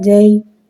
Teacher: حرف لین کو بغیر کھینچے بغیر جھٹکا دیے نرمی سے معروف پڑھیں گے اور زبر کو منہ کھول کے ادا کریں گے